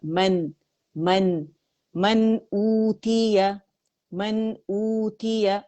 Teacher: یہاں پہ نون ساکن کے بعد حمزہ آ رہا ہے تو اظہار کریں گے نون کا · مد بدل بن رہی ہے کہ واو جو ہے حمزہ کی آواز کو 2 کاؤنٹ کے لیے کھینچ رہی